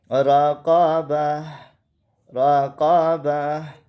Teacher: گول تا پر وقف کرتے وقت اس کو ہا بنا دیں گے